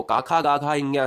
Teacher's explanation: जो कंठ से बोले जाते हैं वो का खा गा घ ञ है